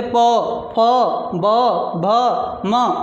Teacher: हमारे दोनों होठ आपस में टच होते हैं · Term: ओष्ठ